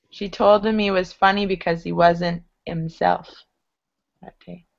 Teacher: All your H's should drop on him, he, and himself.